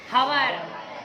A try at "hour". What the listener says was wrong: కాదు. And. ఇక్కడ హెచ్ అనేది సైలెంట్. ఇది ఎలా ప్రొనౌన్స్ చేస్తామంటే అవర్ అంటాం.